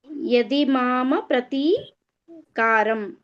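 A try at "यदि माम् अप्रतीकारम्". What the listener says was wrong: ಪ್ರತಿಕಾರಂ separate ಹೇಳಬಾರದು ಯದಿಮಾ ಅಪ್ರತಿಕಾರಂ ಅಂತ ಹೇಳಿ ಇಲ್ಲದರೆ ಯದಿಮಪ್ರತಿಕಾರಂ ಅಂತ ಹೇಳಿ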